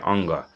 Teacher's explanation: क्योंकि क वर्ग का उच्चारण स्थान कंठ तो होता ही होता है लेकिन जो अंतिम अक्षर है उस वर्ग का उसका उच्चारण स्थान नासिका होता है। तो अंग का उच्चारण स्थान कंठ प्लस नासिका दोनों होगा